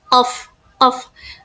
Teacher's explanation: Nah, di sana tuh ada letupan ya. Nah, pada penyebutan huruf qof ini, pangkal lidah itu menekankan langit-langit lunak. · pada huruf qaf ini hampir tak bersuara, tetapi mengeluarkan letupan, bunyi letupan. Qaf sama seperti huruf ba.